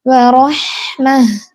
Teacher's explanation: Dalam kata warahmah ini h-nya tetap dibaca tipis ya, Umi. Jangan dibaca tebal.